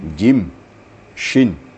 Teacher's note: Jim makharijul hurufnya sama dengan syin yaitu di tengah-tengah lidah dan di tengah langit-langit